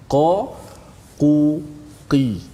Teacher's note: huruf qaf kita dah belajar dalam makhraj huruf, iaitu berada di pangkal lidah, ya, permulaan lidah, hujung halqum, kemudian permulaan lidah.